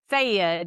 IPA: seɪ jəd